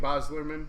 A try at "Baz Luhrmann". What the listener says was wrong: Boslerman. Baz Luhrmann. You're saying it like it's all one name. Baz Luhrmann.